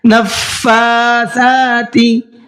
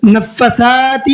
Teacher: دونوں کو سیم ہی پڑھنا ہے، فا کو بھی کھینچنا ہے اور سا کو بھی کھینچنا ہے۔ کس طریقے سے، نفاساتی، نفساتی نہیں پڑھنا ہے، ٹھیک ہے، یہ جو میں نے بعد میں پڑھا ہے یہ غلط ہے اور جو شروع میں پڑھا ہے وہ صحیح ہے۔